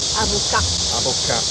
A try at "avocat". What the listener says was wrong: We didn't say the T.